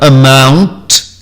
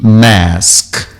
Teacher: O M é essencialmente bilabial, exclusivamente bilabial e, mesmo no final da palavra, é calm, como como se fosse dizer mamãe eu quero, então e eu seguro e fecho o lábio e ainda mantenho esses lábios fechados que produzem o M e com o nasal um pouco mais prolongado